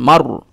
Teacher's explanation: রদিয়াতাম, মিম র জবর মার, এই যে র সাকিন ডান দিকে জবর, এই জন্য রটা পুর হবে। ঠিক আছে, বারিক হবে না, গোল করে বলবেন, এটা মুখখানা গোল করে এই র উচ্চারণটা করবেন।